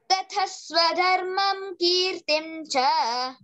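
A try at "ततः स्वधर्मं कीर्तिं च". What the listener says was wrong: అక్కడ ఒకటే ఏమంటే కీర్తించ ఉంది కదా, సున్నా ఉంది. కీర్తింకు మకారం కాకుండా నకారం వచ్చేటట్టు చెప్పాలి అక్కడ. తతస్వధర్మం కీర్తించ.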